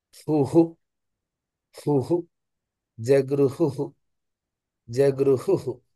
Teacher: హకారము తర్వాత విసర్గ రెండు ధ్వనులు వస్తాయి. మొదట హకార ఉకారములు, తర్వాత విసర్గ.